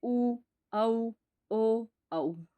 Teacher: वर्तमुखी बोलते समय जो होठ हैं गोलाकार शेप में आए